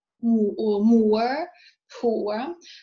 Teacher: So this is the graphic representation of the movement, which means that the diphthong begins in the position for U, moving forwards and down towards R. So the lips are loosely rounded at the beginning, right, becoming neutrally spread for the second element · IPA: /ʊə/